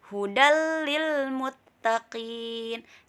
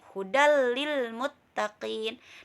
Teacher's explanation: tanpa mendengung ada dua huruf yaitu lam dan rok contohnya hudallilmuttaqin jadi tanwin bertemu dengan la hanya melebur tetapi tidak mendengung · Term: idgham bilagunnah